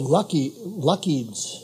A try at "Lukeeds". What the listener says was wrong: Okay, very close, but the U is long. Lukeeds.